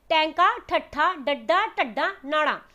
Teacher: ਤਾਂ ਕਿ ਜਦੋਂ ਤੁਸੀਂ ਟੈਂਕਾ ਬੋਲਿਆ ਤੁਹਾਨੂੰ ਜੀਭ ਨੂੰ ਘੁਮਾਉਣਾ ਪਿਆ ਨਾ, ਯਾਨੀ ਕਿ ਤੁਹਾਡੀ ਜੀਭ ਉਲਟੀ ਹੋ ਰਹੀ ਹੈ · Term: ਉਲਟ ਜੀਭੀ ਵਿਅੰਜਨ